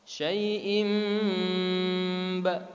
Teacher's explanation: ditahan atau didengungkan 2 harokat. Di situ ada cirinya, ada mim kecil di atas. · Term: iqlab